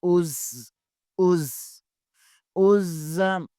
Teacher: زا بھی حروف صفیریہ میں سے ہے، یہاں بھی سیٹی کی آواز ہونی چاہیے